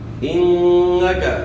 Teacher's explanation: نون مشدد پہ آپ نے غنہ کرنا ہے